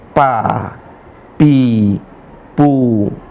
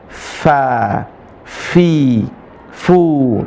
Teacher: Gigi seri atas ketemu bibir bawah. Fa bukan bibir ketemu dengan bibir. · Nah cara mengucap fa perhatikan gigi seri atas ketemu dengan bibir bawah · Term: huruf fa